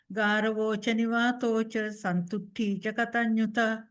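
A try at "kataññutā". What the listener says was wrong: So that's more of the Sinhala phonetics coming in. So you pronounce it as an open sound, but quite short.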